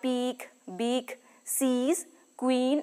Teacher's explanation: the sound is considered to be pronounced with considerable muscular tension of the tongue the lips are neutral or spread the soft palate is raised and in normal speech the tip · The soft palate is raised, and in normal speech, the tip of the tongue touches the lower teeth. The formation may be expressed shortly by defining the sound as a closed, front, tense, unrounded vowel. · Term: long e vowel, long E